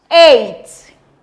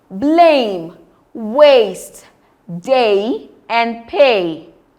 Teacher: It starts as a closed midfront vowel and glides onto a front vowel e.